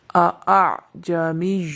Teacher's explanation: یہاں پر جو دوسرا حمزہ ہے اس میں تسہیل واجب ہے، اس کو نرمی کے ساتھ ادا کیا جائے گا